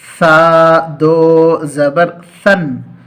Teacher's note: سامنے کی اوپر کے جو دانت ہیں ان دانتوں کے کناروں پر اپنی زبان کو پھیلا کر زبان کے کنارے کو لگائیں